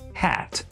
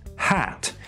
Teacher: I'm from the English West Country, and so I pronounce it, I think, a little more open, hat. At least I think that's what it is, but in any case, you can see that I've put an extra little sign there to indicate that the vowel is pronounced slightly more open than normal. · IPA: [hæ̞t]